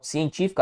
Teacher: a sílaba tônica é a antepenúltima sílaba, portanto, uma proparoxítona